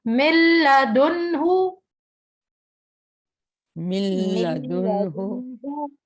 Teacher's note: نون کو ہم نے سائلنٹ کر دیا، میم کو ڈائریکٹ ہم نے لام سے